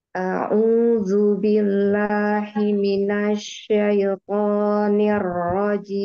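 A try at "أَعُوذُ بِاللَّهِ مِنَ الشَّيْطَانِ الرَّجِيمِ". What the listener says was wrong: Hi, ya lafaz Allah, diturunkan lagi dari pangkal tenggorokan. Haknya bukan hak kecil ya bunyinya. A'udzu billahi minasy syaithanir rajim.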